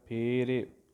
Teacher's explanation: ਫੱਫੇ ਪੈਰ ਬਿੰਦੀ ਵਾਲਾ ਫਲ ਵਾਲਾ ਫੱਫਾ ਨਾ ਲੱਗ ਜਾਵੇ, ਇੱਥੇ ਬਿਨਾਂ ਬਿੰਦੀ ਵਾਲਾ ਫੱਫਾ ਲਾਉਣਾ ਹੈ, ਜਿਹੜਾ ਪੱਪਾ ਫੱਫਾ ਦੋਵੇਂ ਬੁੱਲ ਜੁੜਨਗੇ